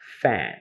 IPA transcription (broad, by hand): fæn